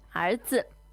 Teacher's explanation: 儿子, that's second tone and neutral tone